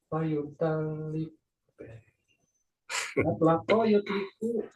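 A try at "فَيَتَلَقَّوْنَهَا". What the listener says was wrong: Bukan, itu ada nunnya. Fayatalak konuha.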